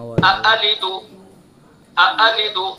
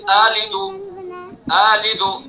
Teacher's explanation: اس کے اندر 2 حمزہ ہیں، دونوں متحرک ہیں اور دونوں قطعی ہیں، تو ان کو دونوں کو صاف صاف پڑھیں گے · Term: تحقیق